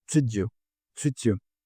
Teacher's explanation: En treat you tenemos la combinación de Y, que puede sonar similar a una CH.